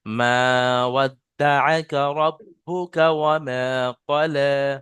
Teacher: মিম আলিফ জাবার মা, এখানে এক আলিফ পরিমাণ টান হবে, ওই টানটা ছেড়ে গিয়েছে।